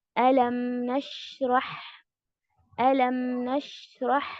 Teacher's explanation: शीन और हा जो है थोड़ा सा लंबा वक्त लेगा, मीम थोड़ा सा कम लेगा as compare to शीन and हा